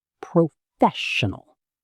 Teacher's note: Four syllables. The stress is on the second part